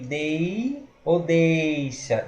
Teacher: Ditongo oral decrescente. Dei ou deixa. Ele cai.